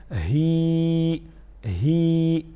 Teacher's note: سینے کی طرف جو حلق کا حصہ ہے یہاں سے ادا کریں گے. یہاں پر ہاتھ رکھے ہی ہی، تو بندے کو جو ہے یہ سمجھ میں آ جاتی ہیں اور آسانی سے وہ سیکھنا پڑ جاتا ہے.